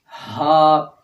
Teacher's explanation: تو اس میں ہا کی آواز حلق کے اندر تھوڑی سی ٹکرا کے آتی ہے، اور ہا کی آواز جو ہے یہ حلق کے آخر سے، یعنی کہ سینے کے اندر سے یا پیٹ کے اندر سے کہہ لیں، وہاں سے یہ نکلتی ہے اور بغیر ٹکرائے نکلتی ہے